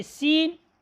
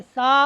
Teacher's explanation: सीन को जब आप अदा करते हैं तो इसमें सीटी बजती है, जबकि लफ्ज़ सा को अदा करने में सीटी नहीं बजती